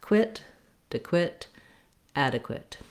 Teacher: And then lastly, the qu, the QU, says the k and w sounds together.